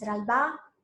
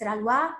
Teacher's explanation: the syllable ba, that in Amdo is realized as wa.